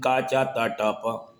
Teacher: ये वे व्यंजन होते हैं जिनके उच्चारण में आवाज़ में भारीपन कम होता है, जो सीधे सीधे सरल होते हैं। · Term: अघोष व्यंजन